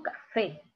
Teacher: la mayor fuerza de voz al final en esta sílaba fe y esta sílaba es la última bien y ha terminado en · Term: sílaba tónica